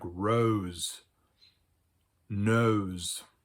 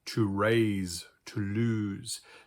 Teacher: So, for instance, in English, when we have words where the sibilant or the S is couched or bookended by two vowels, it may actually turn into a voiced sibilant, a Z sound. For instance, we have words like rose, nose, or verbs like to raise, to lose.